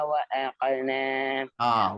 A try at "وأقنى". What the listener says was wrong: அல்ல وأقنا வல்லினத்துக்கு வரணும் وأقنا எப்படி